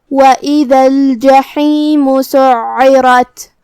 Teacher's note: عین کی ادائیگی حلق کے درمیان والے حصے سے ہے جو کہ اس پہ تشدید ہے تو 2 حرف کے برابر ہمیں عین کو پڑھنا ہے. · کلمت الجحیم میں یہاں حرف الحا کو ہم حلق کے درمیان والے حصے سے ادا کریں گے. آخر میں میم پہ پیش ہے تو اس کا دھیان رہے. · را کو ہم بھاری آواز میں ادا کریں گے کیونکہ اس پہ زبر ہے تو یہاں را کا حکم ہوا تفخیم. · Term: حرف العین